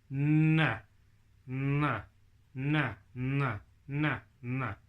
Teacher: na is right at the top of your mouth behind your front teeth